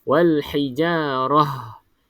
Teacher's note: Kalau berhenti bunyi dia ha untuk ta bulat ni